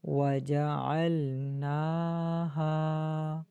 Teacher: نون کے اوپر کھڑی زبر ہے، ہا الف ہا، ان دونوں کو ایک الف کی مقدار کھینچیں گے